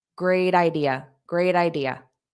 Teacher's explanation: A native speaker will probably turn this T into a soft D sound and say, great idea, the idea, the idea. So you hear a little bit of a D sound before idea.